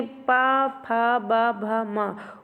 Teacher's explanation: ओष्ठ के जो दोनों ओठों के स्पर्श से जो आवाज निकलती है यानी प जब आप बोलेंगे तो दोनों ओठ आपस में पहले एक बार चिपकेंगे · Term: ओष्ठय